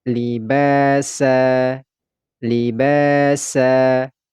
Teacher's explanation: Pada huruf ba ini kita baca panjang 2 harokat.